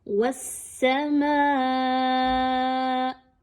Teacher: वस्समाअ, यहाँ पे देखिए सीन तशदीद के साथ मौजूद है, सीन को आपने वाव के साथ मजबूती के साथ मिलाना है। वस्समाअ, मद आ गई है और हमजा उसी कलिमे के आखिर में आ रहा है, तो आपने इस मद को अच्छे से खींच के पढ़ना है, मिकदार को कम नहीं रखना।